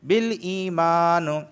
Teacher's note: یا ساکن سے پہلے زیر آیا ہے اس وجہ سے میں اسے کھینچ کے پڑھ رہا ہوں